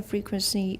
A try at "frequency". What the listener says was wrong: Frequency. Good. Watch the N. Everyone, frequency. In Taiwan English, you often just leave a nasalized vowel there. You have to watch and listen to get this. Taiwan English will often have frequency. No N. Just a nasalized vowel. Frequency should be frequency. Frequency.